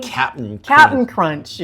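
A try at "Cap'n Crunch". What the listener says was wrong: You don't pronounce the T. There's no T in it.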